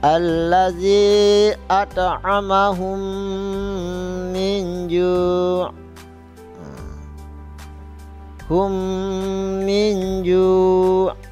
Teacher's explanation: mim mati bertemu dengan mim, maka dibaca agak dengung sedikit dan gunnah